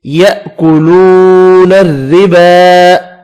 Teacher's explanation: را کو باریک پڑھیں گے، کھڑی زبر کو ایک الف کی مقدار میں کھینچ کر پڑھنا ہے